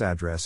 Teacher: in this case the accent is in the second syllable corresponding to dress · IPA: ˈæˌdrɛs